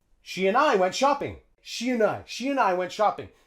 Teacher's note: We use schwa for the vowel sound in and. She and I. And we'll drop the D and link it onto the I.